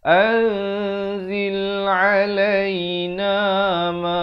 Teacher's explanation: Ikhfa hakiki dibaca dua harakat. Dia dengan samar di sini.